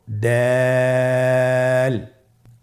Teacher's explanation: দাল হরফটি বারিক হরফ। এ হরফটি উচ্চারণ করার সময় আমরা অবশ্যই তিন আলিফ টেনে পড়বো